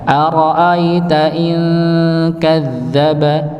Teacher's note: Setelahnya kadzdzaba ya, huruf dzalnya ada tasydidnya maka dihentakan.